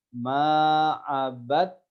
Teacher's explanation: Hilang huruf dalnya, yang kita baca langsung masuk ke huruf ta. Nah, di antaranya ini karena huruf dal dan huruf ta itu huruf yang sejenis. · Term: idgham